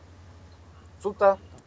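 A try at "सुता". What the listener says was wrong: А долгая. Вот видите, я вам уже сказал. А и долгий, это значит женский род.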